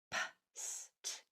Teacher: So for instance, the P, the S, the T, voiceless, no vocal cords are used.